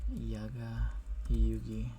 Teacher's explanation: these K's are gonna go away and become G's